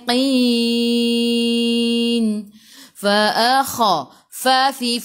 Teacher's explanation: gigi atas menyentuh perut bibir bawah.